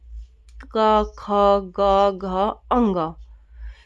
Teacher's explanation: जैसे बोल के देखो आवाज क्या है गले से आएगी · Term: कंठ